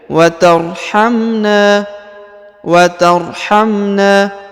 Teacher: Huruf na dipanjangkan 2 harokat karena di depannya terdapat alif